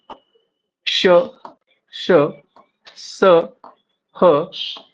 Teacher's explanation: व्यंजनो के उच्चारण मे मुख आगे के परस्पर निकट आने से वायुमार्ग संकीर्ण हो जाता है तथा हवा घर्षण संघर्ष के साथ निकलती है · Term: उष्म व्यंजन